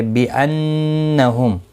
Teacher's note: نون مشدد پر غنہ ہوگا